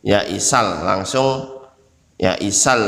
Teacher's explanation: Ya isal, ini lamnya, ini lam syamsiyah karena lamnya tidak dibaca